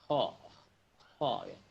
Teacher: Jadi kho itu ada ngoroknya, ingat ada ngoroknya ya. Ada ngoroknya dan ada ya seperti tadi saya sebutkan, seperti orang mau buang dahak ya.